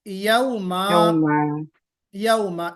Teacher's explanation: जब हम 2 ज़बर के ऊपर वक्फ करते हैं, 2 ज़बर के ऊपर वक्फ यानी स्टॉप करके पढ़ते हैं, तो हम अलिफ के साथ पढ़ते हैं